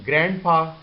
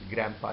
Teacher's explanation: the sound of d has been removed and n has been changed to m, and it is the mixture of these sounds, these two sounds of grand and pa, is grandpa here.